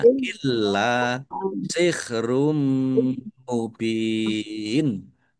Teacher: lamnya ada tasdidnya, dibaca double dan ditekan ya biar tampak doublenya